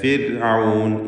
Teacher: ഫിർഔൻ ഇതിലുള്ള റാ പ്രത്യേകം ശ്രദ്ധിക്കുക. തർക്കീഖാണ്. സാക്കിനത്തായ റാഇന് തൊട്ടു മുമ്പിൽ സ്ഥിരപ്പെട്ട കസ്റുണ്ട് എന്നതാണ് അതിനുള്ള കാരണം.